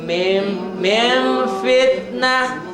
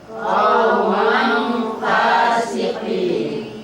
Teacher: kalau nun mati ketemu fa, tidak ang lagi tapi bunyinya m. Bunyi m tapi bibirnya tidak nutup.